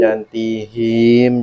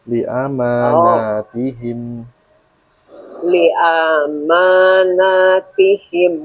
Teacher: Nah, jangan hi-nya jadi panjang, jangan tihim, jangan gitu.